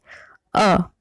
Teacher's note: जब हम अ का उच्चारण करते हैं तो हमारी जीभ मध्य में चली जाती है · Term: मध्य स्वर